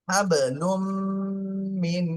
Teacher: হাব লুম, মিম মিম জের মিম, নুন সাকিনের পরে এখানে আবার ইদগামে বা গুন্নার হরফ আসছে, এজন্য গুন্না সহ মিলাতে হবে। এই নুনটা বাদ পড়ে যাবে। মিম মিম জের মিম, হাবলুম মিন।